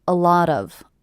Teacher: I hear these 3 words as one unit. A lot of, with the stress happening on the middle word.